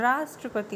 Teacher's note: जैसे राष्ट्रपति र में आ की मात्रा है। राष्ट्रपति मतलब रा पर बल दिया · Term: बलाघात